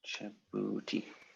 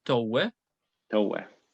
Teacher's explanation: Yeah, in this case, the B has totally changed into a W type sound, which is a thing that happened in Coptic.